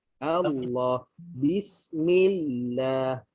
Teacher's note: Pada perkataan Allah di tengah-tengahnya ada sabdu. Okey, maka bila kita sebut Allah, okey, bayangkan ada dua lam.